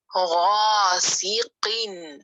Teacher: letter غین موٹا ہے، اور ہائیسٹ لیول پہ موٹا پڑھا جائے گا کیونکہ ایک تو زبر والا ہے، پھر اس کے ساتھ الف